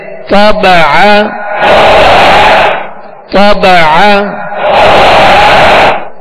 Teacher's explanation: تا کو پر پڑھیں گے اور عین کو درمیان حلق سے ادا کریں گے